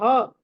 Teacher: భ అన్నది మహాప్రాణం ఒత్తి చదవాలి